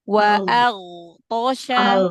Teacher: Huruf ghain punya sifat rakhawah, jadi dialirkan suaranya. Huruf ghain, huruf istila'la ya.